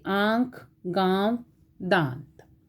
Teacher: अनुनासिक, यह नासिक्य वर्ण है। इसका उच्चारण जो है नाक और गले से होता है